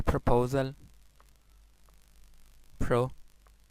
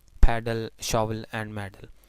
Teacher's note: So once again L is syllabic.